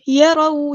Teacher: را ہمارا heavy letter ہے، پورا ادا کریں گے، فل ماؤتھ لیٹر ہے